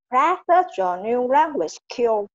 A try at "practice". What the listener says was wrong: Practice thì thiếu âm sờ. Thiếu âm sờ, hiểu không? Thiếu âm sờ sau chữ test á.